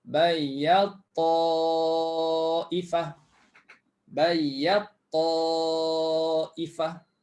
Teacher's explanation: Fahamnya ialah ta dah tak disebut. Terus sebut ta.